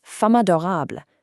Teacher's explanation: Instead of pausing between them, the consonant and the vowel crash together into a brand new syllable · It mathematically merges the M sound from femme and the A from adorable into this totally new syllable, ma. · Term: enchaînement